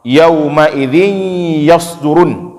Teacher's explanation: Kalau idgham misalnya bacaan idgham, yauma idzin yasdurun, ya, yauma idzin, tanwin yang ada pada dzin itu langsung masuk menjadi ya, yauma idzin, ya, itu berubah, ya, daripada nun langsung berubah masuk ke huruf ya.